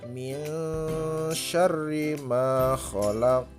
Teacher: Jadi hukum bacaannya adalah ikhfa hakiki. Nah, dibaca samar, bukan min tapi samar. Samarnya bersiap-siap menuju huruf shin.